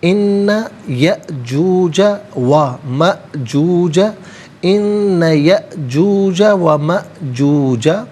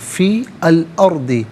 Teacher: فا کے نیچے زیر ہے, اسے الارض کی لام ساکن کے ساتھ ملائیں گے, درمیان میں سے الف عین حمزہ کو حذف کیا جائے گا